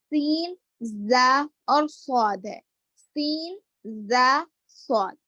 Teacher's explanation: ये हुरूफ ऐसे हैं जो जिसमें सीटी की आवाज आती है। सीन, जा, स्वाद, इसमें स्वाद को मोटा पढ़ेंगे, सीन और जा को बारीक पढ़ेंगे।